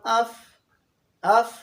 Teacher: فا اوپر والے جو دانت ہے ثنایا علیا اور نیچے والے ہونٹ کے گیلے حصہ سے ادا ہوتا ہے، جو درمیانی حصہ ہے اس سے ادا ہوتا ہے.